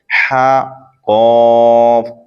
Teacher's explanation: عین قاف، عین حلق کے درمیان سے ادا ہوتا ہے، اور قاف زبان کی جڑ تالو کے نرم حصے سے ادا ہوتا ہے۔ حا قاف، حا حلق کے درمیان سے ادا ہوتا ہے، اور قاف زبان کی جڑ تالو کے نرم حصے سے ادا ہوتا ہے۔